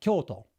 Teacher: Kyoto, it's pronounced like that, Kyoto, with the accent at the beginning